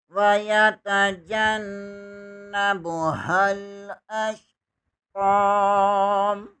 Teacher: जीम ज़बर को नून के साथ मिलाएंगे, नून मुशद्दद है, यहाँ पर गुन्ना लाजमी होगा। हा ज़बर को भी लाम के साथ मिलाएंगे।